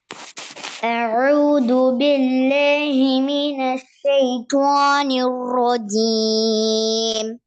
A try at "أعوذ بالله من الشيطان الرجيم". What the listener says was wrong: ஷேட sound வரல. أعوذ بالله من الشيطان الرجيم.